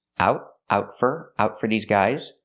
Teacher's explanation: We hear the T in out as a stop T.